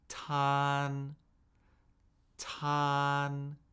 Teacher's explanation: That is the first tone. It is high, flat, and unchanging. So with this syllable, tan, we would say tan, tan.